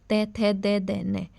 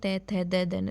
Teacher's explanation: दंत, दांतों पे टच करती है हमारी जीभ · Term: तवरग